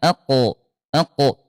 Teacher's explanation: dia syiddah dia kuat dan qalqalah mantul ya aq aq nah kalau huruf kaf dia syiddah dan hams Ak ah gitu ya.